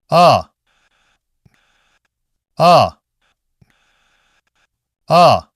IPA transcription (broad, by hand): ɑ